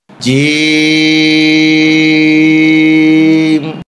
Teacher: জিহ্বার মাঝখান উপরের তালুতে উঠবে, শক্ত সবল আওয়াজ হবে।